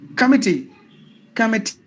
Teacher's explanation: the last part must be given more volume than the other two parts.